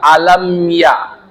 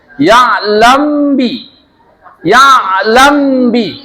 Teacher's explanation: dan cepat nah tapi setelahnya baru ada ikhfa syafawi yalami yalami lamnya itu dipanjangin tiga harkat dengung tipis